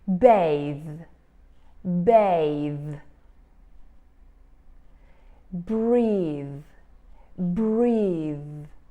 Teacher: end of the word we usually have the voiceless sound only you'll find some vibration when to a final th we add an e